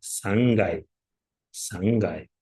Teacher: k harfi ya'ni jarangsiz undoshning jarangli undoshga o'tkazalishi undan oldin kelayotgan burun tovishi sababli jarangli undoshga aylanib ketadi